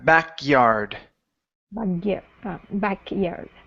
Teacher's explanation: sliding that K into the y a little bit quicker